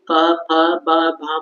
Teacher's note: तो जब भी प फ बा भा बोलते बोलते हैं तो हमारे ओठ मिल जाते हैं तो इससे पता चलता है कि प वर्ग का उच्चारण स्थान ओष्ठ होगा